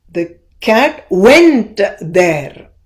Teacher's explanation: So the cat and there become very weak when compared to went.